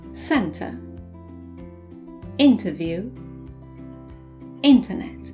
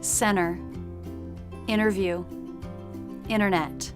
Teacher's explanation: in American English the letter T is sometimes dropped after an N for example in British English we would say Center interview internet